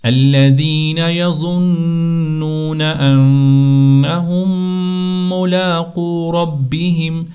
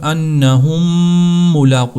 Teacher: الَّذِينَ يَظُنُّونَ أَنَّهُم مُّلَاقُو رَبِّهِمْ، تو ہم نے یہاں پر انہم ملاقو، اس کے اوپر غنہ کرنا اچھی طرح سے، دونوں میم کو الگ سے نہیں پڑھنا، اس میم کو ایک ہی بار پڑھتے ہیں جو دوسری والی میم ہے اور اس کے اوپر غنہ کیا جاتا ہے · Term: ادغام شفوی